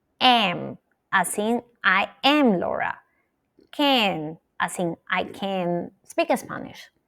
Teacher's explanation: The short a sound gets pulled toward the nasal position of the sound that follows and it changes. This phenomenon even has a name glute sounds because well yes it sounds like if these two sounds were sticking together like glue, right?